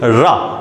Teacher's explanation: तो रा जब हम बोलते हैं तो वायु हमको लुढ़कती हुई सी प्रतीत होती है। कैसी होती है, लुढ़कती हुई सी प्रतीत होती है, इसलिए रा को बोलते हैं अपन क्या, रा को हम बोलते हैं लुंठित व्यंजन।